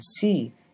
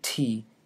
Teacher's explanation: The only difference between these consonants, which are both pronounced at the alveolar ridge, is that the one in C is an alveolar fricative, and the one in T is an alveolar stop